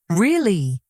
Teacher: If I say, really, falling, strong voice, it sounds excited.